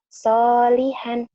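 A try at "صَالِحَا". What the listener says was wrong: Soliha dulu ya. Nggak ada han dulu.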